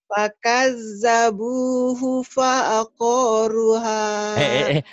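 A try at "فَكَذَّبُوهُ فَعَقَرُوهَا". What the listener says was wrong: Panjangnya ru doang. Koknya pendek. Fakazzabuhu fa'aqoruha. Tekan di ujung.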